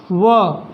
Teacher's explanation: मतलब जो हमारा व होता है इसमें सिर्फ एक ही वर्ड आएगा व, ये सिर्फ ये व वकारस, मतलब व का जो वकार होता है, जो उच्चारण स्थान होता है वो दंतोष्ठ से होता है। मतलब जब भी आप व का उच्चारण करेंगे तो इसमें जो है हमारा दंत और ओष्ठ दोनों का साथ साथ प्रयोग होता है, इसलिए इसे दंतोष्ठ में रखा गया है।